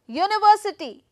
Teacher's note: I'm going to put the stress on uni